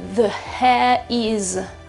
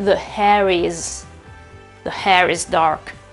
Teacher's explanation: Vedete che la R appoggia, aiuta, transita, è un link verso la vocale successiva. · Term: linking R